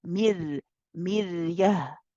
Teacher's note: The ra here is light because it's carrying a sukoon. · The letter before has a kasra, and this is the reason we make the ra light. And the ra is tawassut, so you let it run a little bit, not too long.